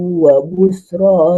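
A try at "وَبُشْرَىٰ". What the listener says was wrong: Bushra. Wa bush. Wa bushra Bukan bus. Shin. Wa bush. ya, seperti shutdown. SHUT. Jadi shut gitu kan? wa bush.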